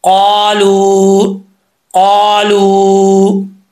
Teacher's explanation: مد کا مطلب ہوتا ہے لمبا کرنا، لونگ کرنا۔ تو اس کو 1 الف کی مقدار لمبا کریں گے واو کو۔ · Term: واو مدہ